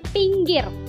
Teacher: I besar itu posisinya tertinggi bawah depan dengan posisi mulut semi tertutup.